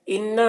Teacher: انا نون مشدد ہے تو نون میں غنہ ہوگا۔